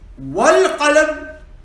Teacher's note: But in wal-qalam, I am not pronouncing the hamzatul wasl because it has come in the middle.